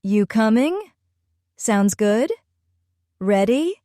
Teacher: Now, let's talk about American intonation, the melody of speech. Americans often end sentences with a little rise in tone when they're being friendly or informal